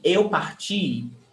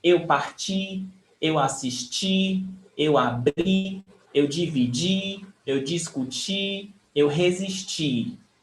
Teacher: Of all these words, the stressed syllable is the last one.